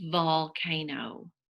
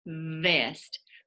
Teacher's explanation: Your teeth are on your lip, on your bottom lip. Your tongue is kind of loose in the back of your mouth. And it's a voiced sound. Your voice box is turned on.